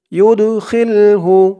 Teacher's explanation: দালটা কলকলার হরফ, ধাক্কা দিয়ে পড়তে হবে